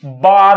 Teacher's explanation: ਉਹ ਵੈ ਨੂੰ ਬੈ ਹੀ ਉਚਾਰਦੇ ਹਨ, ਜਿਵੇਂ ਵਾਰ ਨੂੰ ਬਾਰ ਬੋਲਣਾ। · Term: वै दा बै विच उच्चारण